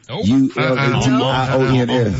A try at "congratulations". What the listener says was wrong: Ain't no D in it, bro. But we pronounce it congratulations.